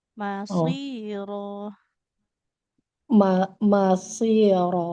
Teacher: shadnya jangan ditekan ibu ya karena dia tidak bertasydid